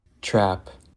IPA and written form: tɹæp (TRAP)